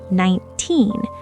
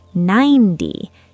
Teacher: The teen number is a da-dum beat, 19. The 10 number is a dum-da beat, 90.